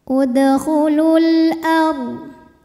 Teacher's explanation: Sebab alif lam menghadapi huruf qamariyah yaitu hamzah. Maka lam sukun ini kita bunyikan dengan jelas atau biasa disebut dengan izhar qamari.